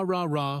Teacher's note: for the r sound the tongue stays back without touching anything